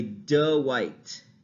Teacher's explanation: we can observe uh the addition of a vowel in a name like dwight so a lot of people instead of saying dwight will say